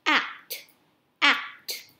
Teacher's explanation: Mình thấy chữ act tận cùng là chữ t, thì mình sẽ bật âm tờ lên. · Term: âm cuối